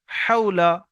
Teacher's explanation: জবার লা হাওলা ওয়াও সাকিনের ডানদিকে জবার এসেছে একে ওলিন বলে ওয়াওলিনকে সর্বদা নরম আওয়াজে তাড়াতাড়ি পড়তে হয় টান দেওয়া নিষেধ